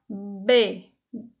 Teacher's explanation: ele vai ter a junção dos lábios para fazer com que cerre, né, feche o lábio e depois abra, fazendo vibrar as cordas vocais para que saia o som